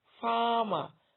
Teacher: my word is louder or stronger or has more emphasis when I pronounce the first syllable. Farmer, I don't say farmer, it is farmer.